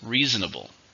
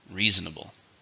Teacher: Reasonable. 4 syllables, stresses on the first.